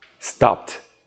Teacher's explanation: Voiceless plus your simple past tense, we get the T sound.